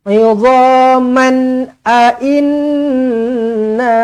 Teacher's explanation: Nun sabdu wajibul ghunah dengungkan dua harakat